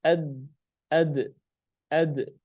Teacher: huruf dal itu harus dia syiddah, tidak mengalir nafasnya. Harus ad, nggak boleh ad.